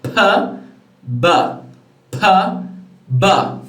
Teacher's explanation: What happens is that it will try to expel the air, but there will be a total obstruction. Your mouth will get closed. And then the air will move out suddenly, as if there was an explosion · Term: plosive